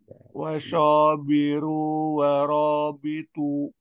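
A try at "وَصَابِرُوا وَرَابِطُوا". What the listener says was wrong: Soknya tebal. Wasabiru warabitu.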